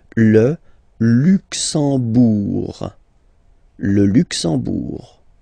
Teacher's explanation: You don't pronounce the M at all, it's this nasal en